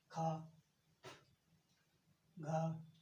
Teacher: बोलने में क्या निकल रहा है, मुंह का फटना, यानी कि मुंह का तेज फटना, या कह सकते हैं तेज साउंड निकलना, इसे कहते हैं महाप्राण